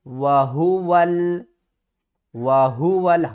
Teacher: ہا کو ہم نے سب سے حلق کے نیچے والے حصے سے ادا کرنا ہے